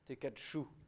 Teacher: Mais il faut penser à faire tomber la prétonique.